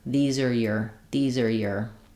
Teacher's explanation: the r gets reduced to ER it sounds like these are as we link these are and then your gets reduced to just your these are your